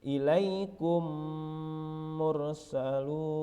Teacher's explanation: Hukum bacaan disebut dengan idgham mimi apabila mim sukun bertemu dengan huruf mim yang berharakat. Cara membacanya adalah seperti membunyikan mim yang ditasydidkan.